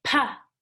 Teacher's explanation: so if P I let my two lips come together but when the two lips come together they stop the air and then they let the air out